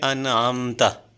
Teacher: اور آگے ہے انعمتا، یہ آپ دیکھیں نون ساکن کے بعد آئین آ رہا ہے، پہلے نون ساکن نون تنوین کے بعد آئین آ رہا تھا اور ابھی نون ساکن کے بعد جو ہے وہ آئین آ رہا ہے، تو ہم ڈائریکٹ پڑھیں گے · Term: اظہار